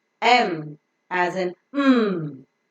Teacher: the letter m is pronounced by closing both the lips the upper lip and the lower lip come extreme close to each other touching and pressing each other so that the oral cavity is completely closed the air that